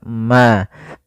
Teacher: Izhar itu jelas, syafawi itu berkaitan dengan syafah kita, dengan bibir kita. Maka mim mati itu kan makhrajnya daripada bibir kita, maka mim itu kan rapat ma. Maka di sini harus jelas suara mimnya, tidak boleh ditahan. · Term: izhar syafawi